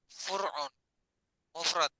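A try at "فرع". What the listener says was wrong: Far'un, desa Fur'un. Far'un. Ya, ya, yang benar Far'un, bukan Fur'un.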